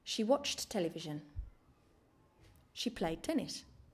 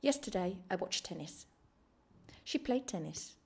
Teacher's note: watched ends with a T sound and television starts with a T sound we don't pronounce two similar sounds together we can only pronounce one so we omit the first T sound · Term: same sound rule